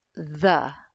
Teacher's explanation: make sure that the word the has that friction of air flow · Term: voiced fricative